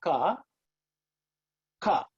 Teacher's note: the tongue actually raises and touches the palate and it blocks the air from coming and then it releases it